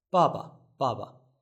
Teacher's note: The first one is the fourth tone. The second one is neutral.